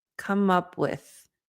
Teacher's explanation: the th is the unvoiced th so you're going to feel air